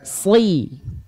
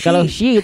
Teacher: huruf shod itu Si. dilafalkan seperti itu tapi diangkat pangkal lidahnya, lidah terdalamnya.